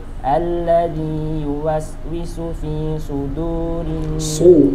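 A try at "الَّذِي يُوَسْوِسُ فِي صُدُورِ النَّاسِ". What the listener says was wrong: Shotnya saja ya, kurang tebal. Nah, su pertama dengan su kedua harus beda ya. Yang tipis coba su. Yang tebal su. Beda ya. Su tebal. Nah, tapi sama-sama ya, karena sama-sama huruf yang punya sifat sofir ya. Sofir itu desis, suara yang tajam.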